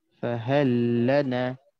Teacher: wajib untuk kita masukkan lam pertama ni kepada lam kedua. Jadi macam satu lam je. Jadi dia akan jadi macam ni lebih kurang. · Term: mutamathilain